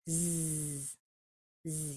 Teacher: It's just a vibrating S. Zzz, zzz, using your vocal cords.